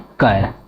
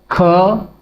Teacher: इसको आप स्वयं भी उच्चारित करके देख सकते हैं। क की ध्वनि जब हम जैसे ही उच्चारित कर रहे हैं, उसमें हमें जो है एक और ध्वनि बाहर आ रही है, अ की।